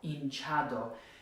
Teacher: It's not hinchado or hinchado, it's hinchado because it ends in a vowel, and so we'll have the second to last syllable stressed. Okay, not super difficult, just keep in mind if a word ends in a vowel, an N or an S, second to last syllable.